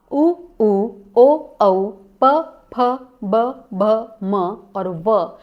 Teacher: उसके बाद ओष्ठ्याहा, उ ओ औ प फ ब भ म और व, इनका उच्चारण स्थान है ओष्ठ